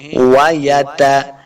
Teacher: وَيَتَجَنَّبُ نون مشدد ہے، جیم کو نون کے ساتھ ملا کے پڑھنا ہے، اور جب آگے نون مشدد ہے تو یہاں پہ غنہ کریں گے، اپنی آواز کو ناک میں لے کے جانا ہے۔